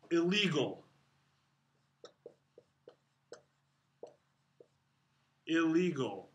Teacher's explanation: the n becomes the next letter it assimilates into the next letter and then there's two of them illegal and it does so because the n Sound is a